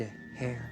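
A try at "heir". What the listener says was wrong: You don't even pronounce the H.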